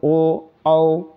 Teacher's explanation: कंठ और ओष्ठ ये दोनों का सहायतों से ये बोले जाते हैं, इसलिए इसको कंठोष्ठ बोला जाता है, ठीक है ना।